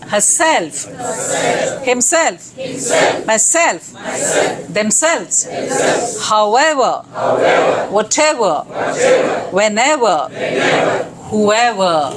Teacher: So the self and ever get the stress.